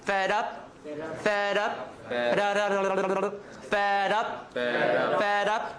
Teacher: D becomes a flap, right? Because it comes between 2 vowels.